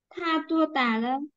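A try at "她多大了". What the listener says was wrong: Tua tạ. Chị đọc tua tà là thành tiếng Việt rồi chị ạ.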